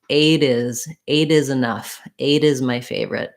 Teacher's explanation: the t when it links to a vowel turns into a flap and it sounds like a d